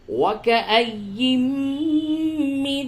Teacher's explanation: نون ساکن کے بعد میم ہے، ادغام مع الغنہ ہوگا